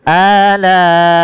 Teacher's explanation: Alai, yaitu mad wajib muttasil pada lafal la, yang dimana di sini bertemunya atau adanya hamzah yang datang setelah huruf mad, dan hamzah tersebut pada satu kata, maka dinamakan dengan mad wajib muttasil, harus dipanjangkan sepanjang 4 atau 5 harakat